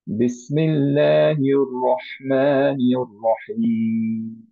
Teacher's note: সবগুলো র হেভি, কোনোটাই হালকা না